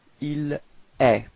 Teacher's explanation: So it's quite strange because it does sound the same as tu, okay, but then there is this final T, but you don't pronounce it